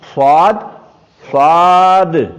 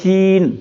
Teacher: صاد جب ہم نے کہا زبان اوپر اٹھی, استعلا ہوا, اور جب سین کہا تو زبان اوپر نہیں اٹھی. تو یہ اس میں فرق ہو گیا.